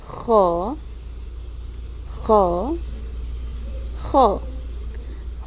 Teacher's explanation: خا کو بھی حلق سے نکال کے پڑھیے